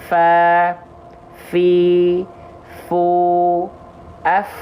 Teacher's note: maka fa akan dilafalkan dengan sifat yang namanya adalah hams